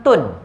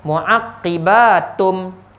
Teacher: Maka ulama mengandaikan tanwin itu digabungkan ke dalam mim. Tanwin itu dimasukkan ke dalam mim. Bila dimasukkan, mim tu pula ada sabdu.